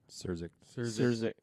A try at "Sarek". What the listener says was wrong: I don't think there's an extra Z in there. I think it's Zurich. think there's that extra Z.